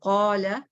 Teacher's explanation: جب پیچھے heavy letter ہوتا ہے جیسے قالا تو الف بھی ہیوی ہو جاتا ہے